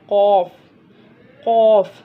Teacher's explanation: मैंने आपको बताया था ना, हर्फ मुस्तालिया का हर्फ है, इसको पुर पढ़ना है, हमेशा मोटा पढ़ना है।